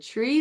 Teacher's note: your lips are going to protrude forward and you're going to feel that tongue come up for the R